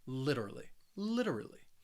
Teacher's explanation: this word more with that flap t sound so that t in the middle it's going to sound like a soft d sound it is a subtle d sound